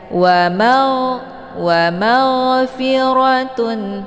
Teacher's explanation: Jadi jangan dipantulkan, jangan keluar bunyi gh, itu juga bacaan yang salah ya, tapi dialirkan saja.